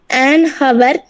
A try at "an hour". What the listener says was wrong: Hour, actually it has to be pronounced as hour. Hour. H is silent. Okay, so an hour, an orbit, an egg.